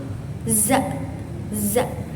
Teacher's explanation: Za ini keluar dari ujung lidah yang dekat gigi depan. Terus dia juga bersifat majhur. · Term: huruf za